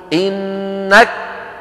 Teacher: بعض إخواننا ينطقون الكاف والتاء شديدتين فقط ولا يهمسونهما، فيقول أحدهم إنك، ويقفل مخرج الكاف ولا يجري النفس.